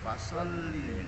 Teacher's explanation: Fasalli ini harus dibaca pendek, satu ketukan